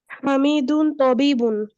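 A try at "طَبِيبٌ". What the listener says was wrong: মাদ আছে না?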